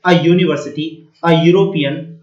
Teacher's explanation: यहां पर ये लेटर जो है ये यू है वोवेल, लेकिन इसका साउंड आ रहा है यूनिवर्सिटी, तो ये या यज्ञ से स्टार्ट हो रहा है, इसलिए इससे पहले ए आ गया। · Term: य का साउंड